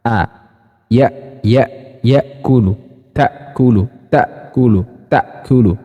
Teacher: hamzah itu nafasnya tertahan, suaranya tertahan.